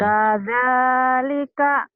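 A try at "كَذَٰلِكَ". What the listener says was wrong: Yang panjangnya za-nya ya. Kadzalika, kadzalika diulang.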